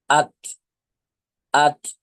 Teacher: আপনার জিহ্বার আগার সামনের ওপরে বড় দুই দাঁতের গোড়ার সাথে লেগেছে